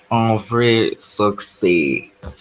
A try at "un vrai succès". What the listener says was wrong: Not suck. It's not suck. It's suc. So you, okay? You have to move away from the English pronunciation. Yes, you remember your letter U is U. So you have to say su, not su. Su.